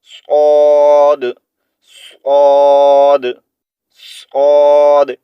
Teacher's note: सौद के भी शुरू में हल्की सी सीटी की आवाज़ आती है, लेकिन इसका साउंड जो है वो मोटा है, हमने इसको मोटा पढ़ना है, ठीक है।